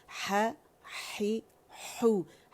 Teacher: ہا بھی وہیں سے ادا ہوگا جہاں سے عین ادا ہو رہا ہے، یعنی وسط الحلقہ سے